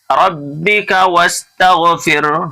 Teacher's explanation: را کو موٹا کرنا اس لیے کہ را کے اوپر زبر ہے